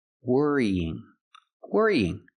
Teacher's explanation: Pronounce E 2 times and link the sounds with Y in the middle.